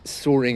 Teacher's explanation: r and as usual with London accents and in receipt pronunciation the r is generally silent